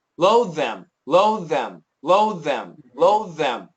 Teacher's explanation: You're going to hear that there's going to be a stop in there for the D.